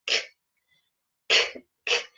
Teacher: you can feel the air coming out onto your hand